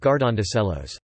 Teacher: Preantepenultimate stress (stress on the fourth-to-last syllable) occurs rarely, only on verbs with clitic pronouns attached